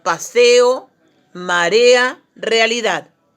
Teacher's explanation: la secuencia de dos vocales que se pronuncian en sílabas distintas aquí las vocales se separan a diferencia del diptongo que las vocales van unidas en una sola sílaba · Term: dos vocales abiertas